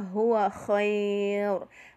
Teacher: harful lin bertemu satu huruf hidup yang diwakafkan menjadi madlin, dibaca panjang sampai 6 ketukan.